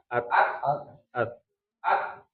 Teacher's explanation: Tahan dulu di T baru hans-nya ya. [berdehem] Baru kemudian H at ya.